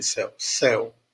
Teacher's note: Meus lábios eles se fecham na pronúncia do U de céu